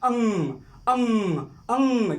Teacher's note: आपके उच्चारण में जो है कि हवा मुख के साथ साथ नाक से भी निकल रही है। जैसे अंग, जब आप लोग इसका उच्चारण करेंगे तो मुख और नाक दोनों के साथ जो है कि इसका जो है कि उच्चारण होगा।